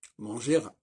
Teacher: le R ne doit pas s'entendre quand il n'y a pas de E après